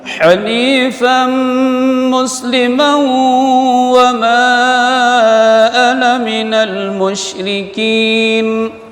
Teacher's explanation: bukan ha tapi ha di tengah tenggorokan